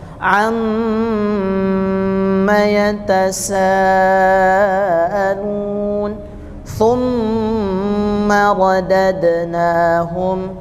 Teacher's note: gunah yang panjangnya itu terdengar panjang pada Nun dan mim yang Sukun